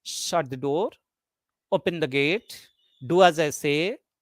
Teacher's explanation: in commanding sentences are spoken in falling tone